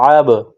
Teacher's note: اگلا حرف دیکھیے، عین، عین پر زبر ہے، گلے کے درمیان سے زور لگا کر عین کو نکالیں گے · اس کے بعد با ہے، با پر جزم کا نشان ہے، عین اور با کو آپس میں ملائیں گے اور با پر قلقلہ کریں گے، عین با زبر عب۔